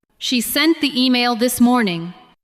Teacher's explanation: Stress sent, email, and morning.